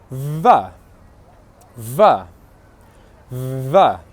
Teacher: when you make the V sound your teeth top teeth touches your bottom lips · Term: labiodental sound